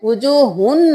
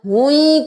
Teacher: یہاں پہ ہا کو یا میں مدغم کرنا ہے، وجوہن نہیں کرنا، ہوئی کرنا ہے. دو پیش کے ساتھ یا کو ملانا ہے کیونکہ اس پہ تشدید ہے.